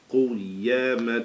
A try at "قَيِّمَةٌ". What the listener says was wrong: No, not قو. قي. قي. قيمة. Remember, spell it out. Don't try to read it one shot.